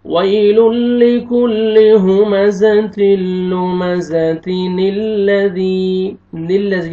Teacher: तनवीन के नून को जेर देंगे और ये बीच में हमजा वसली गिर जाएगा और नून जेर लाम नील हो जाएगा।